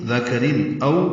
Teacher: نون ساکن کے بعد دال آنے کی وجہ سے اخفا ہے. دال کاف باریک ہے، نرمی سے پڑھے جائیں گے، را بھی باریک ہے